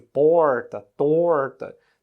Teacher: Outro exemplo característico é aquilo que a gente chama de R retroflexo, né? Esse nome retroflexo é porque a gente tem a impressão que o R dá uma voltinha dentro da língua, que é aquele som característico de certas regiões do sertão sul do Brasil, interior de São Paulo, interior de Minas, de Goiás, Mato Grosso, que é aquele som de porta, torta.